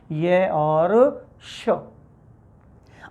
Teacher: जिह्वा तालु के पास जा रही है, तो तालु के पास जाने के कारण इसको तालव कहते हैं, और इसमें होते हैं ये और श।